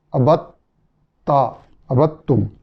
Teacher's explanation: ما فرطتم، ابدتم، دال اور تا کا ادغام جیسے آپ جانتے ہیں یعنی ان کا مخرج ایک ہی ہے، تو ابدتم دال کا تا میں ادغام ہو جائے گا تو ابدتم نہیں پڑھا جائے گا بلکہ ابدتا، ابدتم.